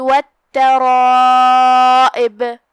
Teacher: جو کہ اس کے بعد مد ہے تو ہم مد کو بھی تفخیم سے پڑھیں گے کیونکہ مد اپنے پیچھے والے حرف کا حکم لیتا ہے۔ یہاں مد واجب متصل ہے، ہم اپنی آواز 4 مد کے برابر لمبی کریں گے۔ آخری میں ہم با پہ روکیں گے تو اسے ہلائیں گے کیونکہ یہاں با کا حکم ہے قلقلہ۔